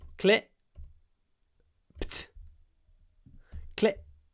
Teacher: we clip the vowel in the word clip so in clipped which is clip clip the I is clipped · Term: clipping